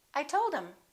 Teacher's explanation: instead of saying i told him we just dropped the h